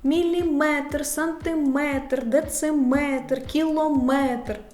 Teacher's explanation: друга група слова з наголосом на метр